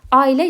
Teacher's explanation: Dörd hərfdən ibarətdir ailə sözü. Amma tələffüsdə ora y səsi daxil olur. Bilirik ki, müxtəlif cinsli qoşa saı sözlərin tələffüsü zamanı bura a, i səsi yanaşı gəlibsə, o zaman həmin a və i səsinin hərfinin daha doğrusu arasına bir dənə y səsi daxil olur. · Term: səs artımı